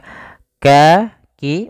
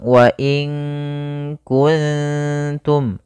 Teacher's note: Kalau kaf di belakang ya, makhraj huruf kaf itu kan di pangkal lidah mendekati huruf qaf